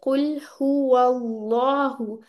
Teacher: लेकिन आपने याद रखना है दोनों लाम मुफखम पढ़े जाएंगे